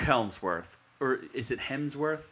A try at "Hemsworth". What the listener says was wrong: It's Hemsworth. There's no fucking L in there. It's just Hemsworth. You've been saying it wrong this entire time.